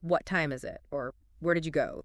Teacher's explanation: your voice typically starts a bit higher on that question word like what or where and then falls as you finish the question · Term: falling intonation